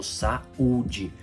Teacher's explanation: no hiato eu não tenho semivogal aí sim são duas vogais